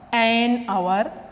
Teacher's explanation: Article an is used here because in pronunciation letter H is silent here.